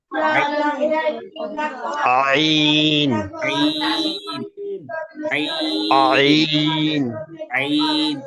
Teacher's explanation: এই আইনটা উচ্চারণ করতে হয় হলো গলার মাঝখান থেকে